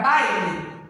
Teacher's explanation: o A vai ser uma vogal e o I vai ser uma semivogal